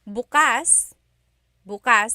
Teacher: the emphasis is on the second syllable that means open.